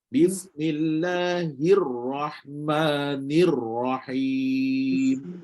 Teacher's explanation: Getaran hujung lidah semasa sebut huruf ra dengan getaran ringan. · sentuh a Bismillahir hir mula-mula tu A sentuh bagi getitar Bismillahirrahmanirrahim kalau baca ro ni Mesti kena ada getaran tak boleh buang getaran dia